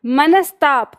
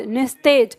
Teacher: जब इस विसर्ग का मेल दंत से होता है यानी त, तो विसर्ग बदलता है दंत स में